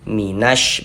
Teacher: Maka ini alif lam bertemu dengan huruf syin dikarenakan huruf syin huruf syamsiyah maka hukumnya alif lam syamsiyah sehingganya huruf lamnya dibaca idgham. Jadi cara bacanya itu dari na langsung masuk ke huruf syin ini